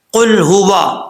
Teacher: قاف حروف مستعلیہ میں سے پر پڑھا جائے گا